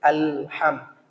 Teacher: lam bersifat tawassut. Posisinya di tengah, tidak menekan dan tidak terlalu berlebihan mengalir. Tidak boleh ditekan.